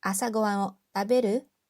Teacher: we use the dictionary form and then we set it with the rising intonation